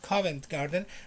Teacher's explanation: You don't pronounce the T. Usually people from London don't pronounce the T.